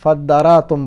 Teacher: فا کی وجہ سے تا اور دال کا ادغام ہوا تو بن گیا فدارا، اس میں تا موجود ہے تو تا اور دال کا ادغام کر کے فداراتم یہ بنا، اور پھر تا اور دال کے مخارج قریب تر ہیں تو قریب المخرج کا قاعدہ اس میں لگا تو یہ دونوں مدغم ہو گئے آپس میں